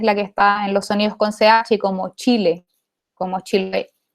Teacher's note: una africada alveopalatal sorda, que es la que está en los sonidos con CH